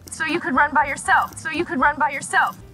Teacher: There's an N, there's a B, and we hear them both very clearly.